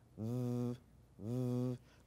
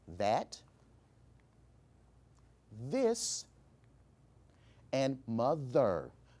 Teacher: notice the buzzing sound that you heard with the sound we call that voiced th sound or the hard th sound